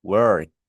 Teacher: Si usted se coloca la mano aquí, work. Fíjense que la K es voiceless, no vibra, ¿vale? Las cuerdas vocales no vibran.